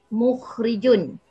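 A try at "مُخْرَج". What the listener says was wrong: Mukhro, bukan mukhri. Kalau mukhri isim fa'il. Mukhrajun. Kalau mukhrijun isim fa'il. Kalau mukhrajun isim masdar mimi.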